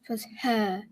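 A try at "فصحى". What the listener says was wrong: That's not a mint. What you did, fusha, is more like you had barbecue and you're like, ah. Not barbecue, mint.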